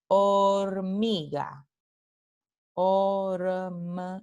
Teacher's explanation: aquí la H es una letra, pero no representa ningún fonema.